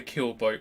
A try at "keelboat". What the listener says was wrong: Keel, not kill. not a murder boat.